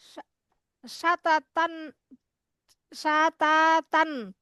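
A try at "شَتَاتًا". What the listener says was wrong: না, সাতা হয় না আপু, ত যাব, ত, ত, এর মতো ধ্বনি, হ্যাঁ, সাত, সাততন,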